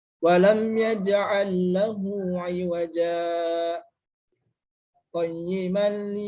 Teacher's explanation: berhenti sejenak sekedar 2 harokat tanpa bernapas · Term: saktah